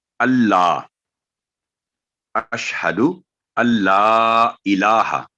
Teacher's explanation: نون پر جزم ہے اور لام پر تشدید ہے، تو یہاں نون سائلنٹ ہوگا